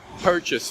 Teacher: the accent is on the first syllable per we say it perfectly the second syllable chase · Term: accented syllable